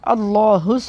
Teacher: तो ये अल्लाह दो मोटा करना है, अल्लाहु, हा को मोटा करना है, सीने से निकालना है हा को